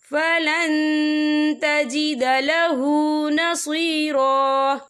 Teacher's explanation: یا دیکھیے فلن، یہاں نون ساکن ہے، نون ساکن کے بعد جو ہے تا آ رہا ہے، اور تا جو ہے اکفا کا ورڈ ہے، تو ہم یہ اکفا کریں گے، نون ساکن کی آواز کو ناک میں چھپائیں گے